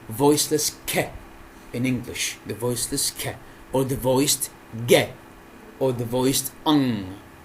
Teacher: These sounds are made by the articulation of the back of the tongue towards the velum. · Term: velars